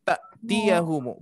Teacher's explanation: Ta'tiyahumu, di sini ada hamzah, yang mana hamzah sukun ini dia sifatnya syiddah, ya, tertahan menjadi ta'tiyahumu, bukan ta'tiyahumu, hati-hati.